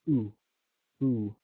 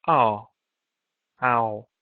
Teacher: you had the vowel sound oo, oo. And that changed to the vowel sound ow